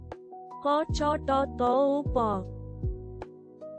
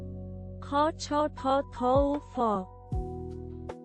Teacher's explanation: দ্বিতীয় বর্ণ মহাপ্রাণ প্রবল বাতাসের সাহায্যে উচ্চারিত